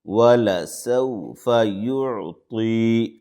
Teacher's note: پیش، یع، طا یا زیر، طی، یعطی، یا مدہ ہے یعنی یا ساکن سے پہلے زیر ہے تو مد اصلی ہے، دو الف کے برابر اس کو کھینچیں گے